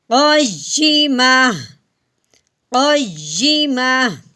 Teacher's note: وقف کی صورت میں اگر گول تا ہو تو تا کو ہٹا دیتے ہیں، پیچھے ہا کی آواز نکالتے ہیں